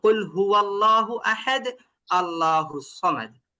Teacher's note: যখন আল্লাহ শব্দ লামের আগে থাকবে জবর তখন ওটাকে মোটাই করতে হবে